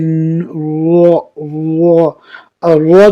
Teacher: زبان کی نوک اور مقابل کے تلوں سے ادا ہوتی ہے. رو جب پڑھو گے تو آپ کی منہ بالکل گولا ہو جائے گا.